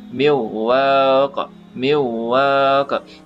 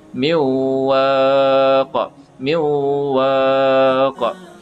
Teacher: Tapi disebabkan ada gunnah, kita tambah lagi, nun itu didengung tambah lagi 1 harakat